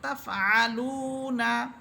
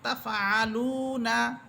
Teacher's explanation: পেশের পর ওয়াও সাকিন আসার কারণে 1 আলিফ টেনে আমরা পড়তেছি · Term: 1 আলিফ মদের